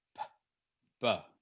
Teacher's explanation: And you'll notice, as you can see here, these are all in voiced pairs. So this P and B here are produced in exactly the same way at the bilabial, which means your lips. Uh, p, b. You make them in exactly the same way.